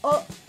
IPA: oʊ